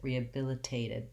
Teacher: i say as a clear t i release it rehabilitated but the second t here because it's between two vowels and it's before an unstressed syllable is going to be a flap · A clear A vowel on the tate syllable, rehabilitated. That first T I say as a clear T. I release it, rehabilitated.